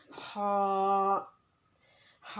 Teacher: ہا کا مخرج ہے وسط حلق، یعنی کہ حلق کا درمیان کا حصہ۔